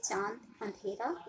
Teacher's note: उच्चारण में वायु नाक और मुंह दोनों से निकलते हैं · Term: अनुनासिक